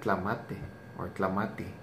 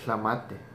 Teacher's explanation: there is a few people that do say a TL sound instead of the devoiced L